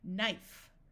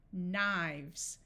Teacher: when we go from one knife to multiple the F becomes a v